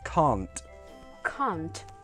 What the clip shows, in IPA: kɑːnt